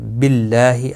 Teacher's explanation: اللہ کا لام باریک پڑا جائے گا اب یہاں پر زیر کی وجہ سے